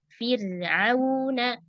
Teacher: ro-nya di sini karena sebelumnya kasrah maka ro-nya tipis ya